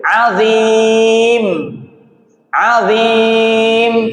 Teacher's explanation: Huruf mim makhrajnya bibir, maka diakhiri dengan melekatkan kedua bibir.